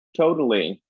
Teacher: So tapping the T is distinctly American. Other accents do it too, but we do it very specifically for intervocalic T.